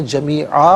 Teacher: دو زبر کی تنوین وقف میں الف سے چینج ہو جاتی ہے تو وقف کی صورت میں جمیعا پڑھیں گے۔